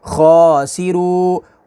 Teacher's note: ہا پیش ہو، میم لام پیش مل، ہومل، خوا کھڑا زبر خوا، ہومل خوا، سین زیر سی، خواسی، خوا کو پر پڑھیں گے اور کھڑی حرکات کو کھینچیں گے، اور را واؤ پیش رو، خاسرو، را کو پر پڑھیں گے، واؤ ساکن سے پہلے پیش ہے تو واؤ مدہ ہوگی، نون زبرنا، خاسرون، آگے وقف، خاسرون۔